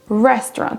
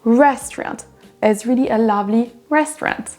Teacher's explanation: La première syllabe là sera prononcée plus forte que les autres.